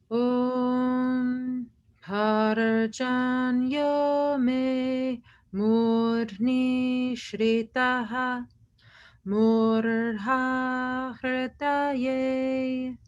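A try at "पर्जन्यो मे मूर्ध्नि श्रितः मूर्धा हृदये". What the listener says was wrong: You got it.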